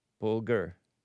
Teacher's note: With the stress on the first syllable rhyming with pulfer or holfer.